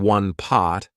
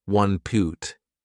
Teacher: Instead of saying one pot, I said one poot.